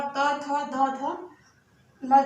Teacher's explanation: त, थ, द, ध, न जो है दंत से बोला जाता है